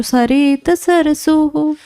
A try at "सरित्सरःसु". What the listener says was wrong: सरित्सरहसु होगा, हलंत लगा हुआ, ध्यान दीजिएगा।